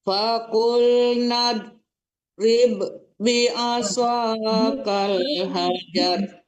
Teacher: Ribnya itu juga nggak boleh dipantul karena di depannya juga ba ya.